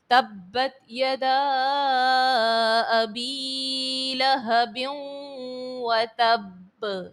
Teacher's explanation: تنوین کے بعد واو حرف یرملون کا ہے اور ادغام مع الغنہ یہاں پر کریں گے، غنے کے ساتھ ادغام کریں گے۔ وتب میں با جو ہے وہ جماؤں کے ساتھ ادا کریں گے۔ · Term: حرف قلقلہ